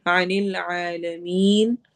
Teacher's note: आइन हुरूफ हलकी में से है, मीन को हमने लंबा करना है